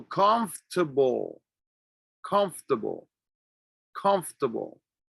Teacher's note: pronounce certain sounds so all you are really saying is conf you don't say the o you don't say the r so you say conf